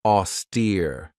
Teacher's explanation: This has 2 syllables, and the stress is on that second syllable with that long E sound